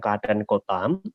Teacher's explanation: pada kata kota itu terdapat tanda koma, maka nada atau intonasi dinaikkan.